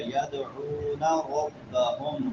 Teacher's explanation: را موٹی ہوگی کیونکہ را کے اوپر زبر ہے. ربہم ہا بڑی ہا یہ حلق کے آخری حصے سے جو سینے کے ساتھ ملا ہوا ہے.